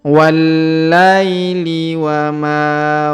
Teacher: diayun sekali karena di depannya terdapat Ya Sukun wallaili wa Ma huruf Ma kita panjangkan dua harakat karena di depannya terdapat Alif